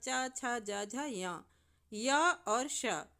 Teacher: जब आप बोलेंगे इन वर्णों को तो देखेंगे कि आपकी जीहवा तालु को छू रही है। तालु को स्पर्श कर रही है।